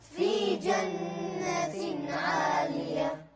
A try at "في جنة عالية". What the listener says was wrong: ما اسمع الهاء. في جنة عالية.